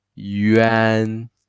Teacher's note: the an always from your throat. Never use nasal sound because no g, no nasal. Everything from the throat.